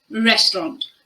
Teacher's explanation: If you want to pronounce this word with a British accent, you need to make sure you use the O sound in the final syllable.